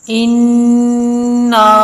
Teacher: نون پہ غنہ بھی کریں گے اور مد ہونے کی وجہ سے تھوڑا لمبا بھی کریں گے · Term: مد منفصل